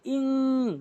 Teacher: এখানে বলতে হবে ইং, গুন্না করতে হবে, নাকের প্রতি নিতে হবে